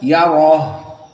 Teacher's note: you must make out the ha because the name is hams. Al-ha jika disukunkan jaroyan nafs, maknanya masih ada udara yang dikeluarkan.